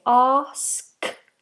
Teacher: we have a nice big open vowel